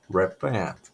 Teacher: O T tem que sair bem fraco